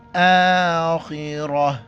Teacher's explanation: خا کو موٹا کریں گے اور را کو بھی موٹا کر کے پڑھیں گے. را پر جب بھی زبر یا پیش ہو را موٹا پڑ جاتا ہے اور گول تا یہ وقف کی حالت میں ہاں میں تبدیل ہو جاتا ہے.